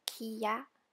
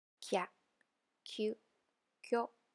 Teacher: If you notice, when we write the combo hiragana or the yo-on, we have to write the first hiragana bigger and with the second ya, yu, yu being smaller or half-sized. And we have to pronounce them together. Instead of kiya, we pronounce as kya.